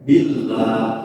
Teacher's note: ketika lafaz Allah diiringi dengan kasrah maka dibacanya wajib tarqiq. Tarqiq itu artinya tipis.